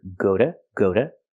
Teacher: The T is pronounced like a fast D.